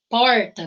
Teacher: nós temos esse r retroflexo que é puxado né então porta nós vamos porta e isso é comum dele